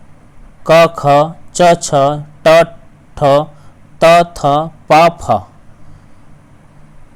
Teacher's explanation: अघोष व्यंजन कहते हैं जिन व्यंजनों के उच्चारण से कंपन ना हो वह अघोष व्यंजन होते हैं। जैसे वर्ग का पहला तथा दूसरा वर्ण, वर्ग का पहला और दूसरा वर्ण, क ख च छ ट ठ त थ प फ।